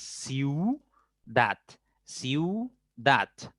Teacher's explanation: De alguna manera suena un poco más la U que la I. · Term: diptongo